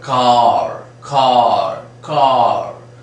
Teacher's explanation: We don't sound that r.